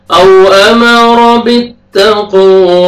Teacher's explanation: قاف قلقلہ double sound آئے گا، واو کو مر فتحہ الف صغیرہ، واو کو ہم نے کھینچنا ہے۔